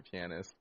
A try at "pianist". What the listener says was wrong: No, you're too much emphasis on the A.